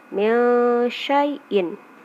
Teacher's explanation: Selanjutnya mil syai'in, nun mati bertemu dengan sya, nun matinya dibaca samar-samar